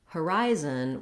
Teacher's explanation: we have second syllable stress. That means the rise syllable has a clear vowel, it's held longer, and the other two syllables are reduced, have reduced vowels, and are shorter.